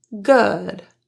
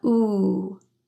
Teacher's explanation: The lips are only very slightly pursed or protruded and your tongue is in a very lax position. So instead of a typical rounded ooh sound that you might expect with double o words, this is an exception and it is uh not ooh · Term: epsilon vowel